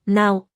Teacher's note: es una combinación de dos sonidos, au